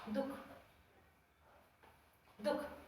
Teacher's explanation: हम यहाँ पर देख रहे हैं कि ये जो विसर्ग है, इस विसर्ग के साथ में इस खा का उच्चारण हो रहा है, यानी कि ना तो पूर्ण रूप से विसर्ग का उच्चारण हो रहा है और ना ही पूर्ण रूप से खा का उच्चारण हो रहा है। और इन दोनों के जो उच्चारण है आपस में समाहित हो गए, इसीलिए हम इस खा को जिह्वा मूलीय खा कहेंगे।